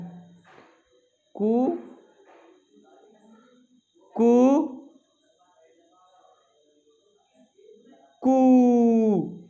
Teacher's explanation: उच्चारण देखिए, पहले का कर रहा हूं मैं 1 मात्रा काल, ह्रस्व स्वर का उच्चारण कैसे होगा, कु, दूसरा दीर्घ स्वर का कु, और तीसरा प्लुत स्वर का कु। इस तरह से मैंने इनके उच्चारण में 1 मात्रा काल का समय लगाया, दूसरे में 2 मात्रा काल का समय लगाया, और तीसरे में 3 मात्रा काल का समय लगाया